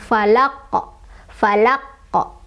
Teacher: Cara bacanya adalah dipantulkan, dan karena kubro, jadi pantulannya besar, falaqo, falaqo, seperti itu ya.